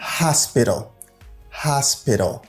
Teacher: Dans mot ça, essayez de prononcer H là. Parce que le stress, il est accentué. On dit hospital.